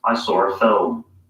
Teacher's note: you can hear that there's an R sound connecting saw and ah. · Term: intrusive R